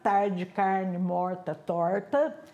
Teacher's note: esse R é um R retroflexo